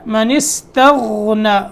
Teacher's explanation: غین کی ادائیگی کے وقت اس کو موٹا کریں گے اور تا کو باریک رکھیں گے. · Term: غین موٹا حرف